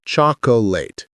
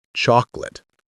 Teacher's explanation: The middle vowel evaporates.